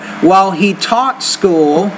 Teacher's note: when you say the word taught, the T, you need to pronounce that with a little more air.